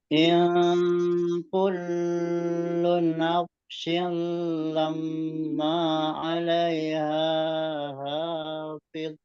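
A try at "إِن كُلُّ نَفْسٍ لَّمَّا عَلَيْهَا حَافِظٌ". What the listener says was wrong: in kullu langsung, jangan dipanjangkan yang kullu.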